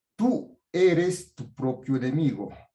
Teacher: Tiene mayor fuerza de voz. No se une a la palabra eres, no es tú eres, sino tú eres, ¿no? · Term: tú tónico